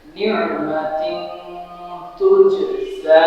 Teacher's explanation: নাকের মুখ থেকে গুনগুন করে গোপন করে পড়তে হবে চন্দ্রবিন্দু নেয়